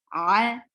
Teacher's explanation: ain from your throat, very clear sound from your throat, not from your mouth